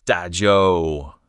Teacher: The ZH sound is tricky. Curl your tongue, tip up slightly. It's close to the English J, but produced further back in the mouth.